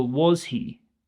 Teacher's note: So was he? The intonation should go up. This is a question.